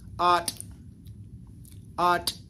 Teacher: This particular phrase, the áatʼ, which is the verb root, gets shortened a little bit.